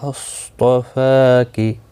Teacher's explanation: صاد مستعلیہ ہے، پر پڑھا جائے گا · طا بھی پر پڑھا جائے گا، مستعلیہ میں سے ہے. فا کے اوپر کھڑی زبر ہے، 1 الف کی مقدار کے برابر کھینچ کر پڑھیں گے